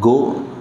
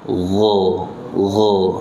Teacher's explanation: Gha, tayyib, ghain ada di tenggorokan bagian atas, jangan dibaca dengan g. La yatogo, bukan go ya, lebih halus daripada bunyi go.